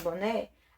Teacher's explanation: a sílaba tônica na última sílaba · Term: oxítona